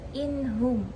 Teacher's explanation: atau tanwin bertemu dengan salah satu huruf Izhar sebanyak en maka wajib memisah nun mati atau tanwin tersebut dari huruf setelahnya tanpa dengung